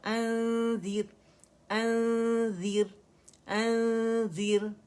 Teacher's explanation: منہ سے کم آواز آئے گی، ناک سے زیادہ آئے گی، کیونکہ ہم نون اخفا حقیقی کر رہے ہیں، ٹھیک ہے. یعنی ہم مکمل نون کو چھپا رہے ہیں.